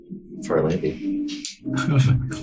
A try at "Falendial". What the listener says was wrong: Falendial? Falendial.